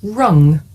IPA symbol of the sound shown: ŋ